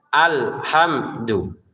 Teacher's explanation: Alhamdu lamnya jangan dipantulkan, jangan dibaca alhamdu mimnya juga ya.